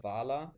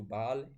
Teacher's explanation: sometimes an initial V turned into a b · from a dentolabial sound to a bilabial sound